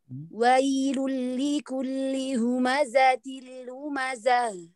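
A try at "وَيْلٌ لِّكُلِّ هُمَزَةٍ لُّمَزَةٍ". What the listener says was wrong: Ya, betul. Silakan dilanjut.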